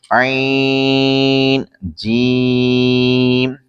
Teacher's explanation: आइन हल्क के दरमियान से अदा होता है और जीम जबान के दरमियान तालु के दरमियान से अदा होता है